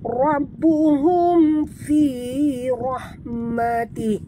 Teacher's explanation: Ra sini kena baca tebal ra tafkhim dan tekan pada ba. Di atas ba ada tasydid.